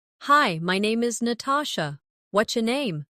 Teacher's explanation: Notice how what's your can sound like whatcha in casual speech.